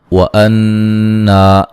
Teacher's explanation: نون مشدد پہ غنہ ضروری ہے. الف مدہ ہے.